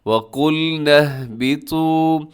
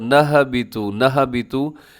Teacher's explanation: ایک تو جھٹکا بھی نہیں دینا اور ہا کی آواز کو ڈبل بھی نہیں کرنا